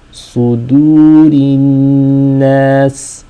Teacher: The dal has to be nice and light. So you're transitioning from a heavy letter, sad, to a light letter, dal. And then the ra, of course, is light because it takes a kasra.